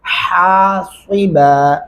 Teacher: और आगे हासिबा, मोटा हा नहीं पढ़ना और यहाँ पे सीन ऐड नहीं करना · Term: बारीक हा